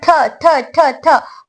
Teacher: सिफत हम्स की वजह से इसके अंदर ता एयर फ्लो हो रहा है